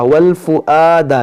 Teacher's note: یہ واو نہیں حمزہ پڑھیں گے